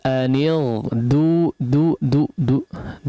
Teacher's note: huruf Dal huruf tipis jangan jadi Dod